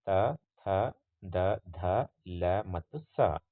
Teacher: ಹಲ್ಲುಗಳ ಸಹಾಯದಿಂದ ಉಚ್ಚರಿಸಲ್ಪಡ್ತಕ್ಕಂತಹ ಅಥವಾ ಹುಟ್ಟುವ ವರ್ಣಗಳನ್ನು ನಾವು ದಂತ ಧ್ವನಿಗಳು ಅಂತ ಕರಿತೀವಿ